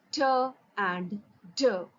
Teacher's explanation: Teeth ridge can be easily felt by placing the tongue behind the upper teeth. By making a complete closure at the teeth ridge and then with the sudden release of the closure, you can pronounce these sounds t and d